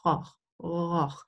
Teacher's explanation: You start without voice and then you move into voice.